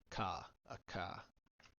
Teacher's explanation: But if it's followed by any other letter besides those two, then it just makes the voiceless velar plosive